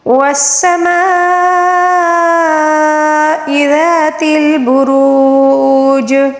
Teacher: مد متصل ہے، اس کو 5 الف کے برابر کھینچ کر پڑھیں گے